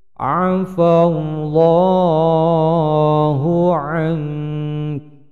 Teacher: Bacaan ihfa mendengung samar sekaligus kafnya disukunkan.